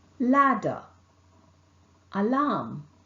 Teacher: with the teeth rich the center of the mouth is obstructed the air escapes between the sides of the tongue and the palate here the vocal cord vibrates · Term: lateral consonant